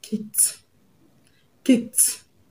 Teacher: The ed at the end of kick is going to be pronounced as t because the last sound of the root word kick ends in k sound